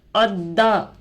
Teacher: दाल पर तशदीद आकर है, 2 मरतबा पढ़ेंगे, एक पिछले वाले हरफ से एक खुद से।